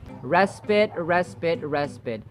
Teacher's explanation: The final vowel sound is as in schwa, the relaxed vowel sound.